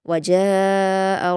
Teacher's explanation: वजाअ में मद्दे मुत्तसिल है, तो इसको हम 5 हरकत के बराबर खींचेंगे